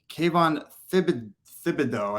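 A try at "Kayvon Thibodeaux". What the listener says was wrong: Thibodeau. Thibodeau. The H is silent.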